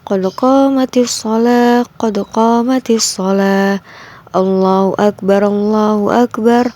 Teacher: Nah, jadi perbedaan melafalkan azan dan iqomah yaitu azan harus dikumandangkan dengan suara yang jelas dan nyaring. Sedangkan melafalkan iqomah membacanya agak cepat dan suaranya lebih rendah daripada melafalkan azan.